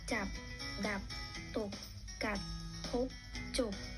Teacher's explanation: ลักษณะเป็นคำที่ออกเสียงสั้นห้วนจบลงทันที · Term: คำตาย